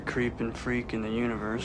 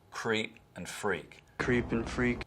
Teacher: southern accents have vowel breaking in words like creep and freak